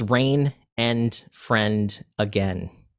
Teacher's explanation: And rain is actually kind of an additive consonants rhyme, because the end sound is still there, but the vowel is different. So you're actually rhyming the N and not the vowel.